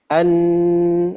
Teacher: kalau Nun dia keluarnya lewat kisyum hidung kalau Nun dia keluar lewat kisum ya lewat rongga hidung ya